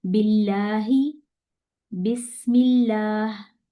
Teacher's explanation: जब इसमें जलाला से पहले कसरा आ जाए तो यहां पर हमने लाम को बारीक पढ़ना है